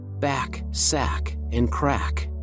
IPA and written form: bæk sæk ənd kræk (back, sack, and crack)